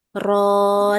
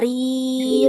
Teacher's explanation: huruf ra yang berharakat fathah itu dia dibaca dengan tebal. Kalau huruf ra yang berharakat kasrah, dia dibaca dengan tipis.